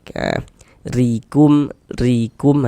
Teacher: Baris satu di bawah huruf harakat kasrah. Huruf ro yang memiliki harakat kasrah maka dia dibaca tipis, dibaca tarkik.